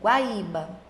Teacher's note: Primeiro veio o som da semivogal, que é o som mais fraquinho, e depois veio o som da vogal. Sempre quando eu tenho um som mais fraco e depois um som mais forte, o meu ditongo vai ser um ditongo crescente.